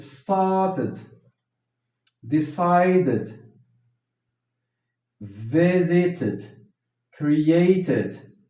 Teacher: pronounce ed as id after either t or d.